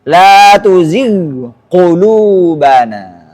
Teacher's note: Perjelaslah bacaan ghain yang bertemu dengan qaf. Jangan sampai kayak idgham.